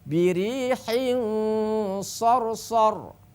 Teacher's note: Birihin, ya walaupun berharokat kasroten karena yang di depan adalah huruf sod, maka dengungnya harus tebal. Birihin, bibir kita, posisi bibir kita sudah masuk, hampir masuk ke huruf sod, ya.